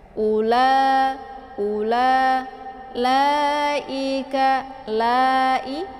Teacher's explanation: Cara bacanya yaitu dipanjangkan 4 sampai 5 harakat ya. Harus konsisten dengan nafas. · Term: mad wajib muttasil